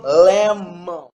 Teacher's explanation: the upper lips and the down lips are together · It's voice because we have vibration in our vocal cords. It's nasal. It's nasal because the air exits to our nose. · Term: bilabial